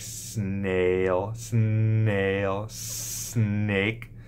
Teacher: the S is produced in the alveolar region at the top part of your mouth behind your front teeth